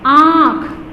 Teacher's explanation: जैसे कि आँख, ठीक है, आप पे लगा दिया हमने चंद्र बिंदु तो आँख हो गया, यानी गले से भी निकल रही है और नाक से भी इसकी, गले से होकर मुंह से बाहर निकल रही है और नाक से भी इसकी ध्वनि निकल रही है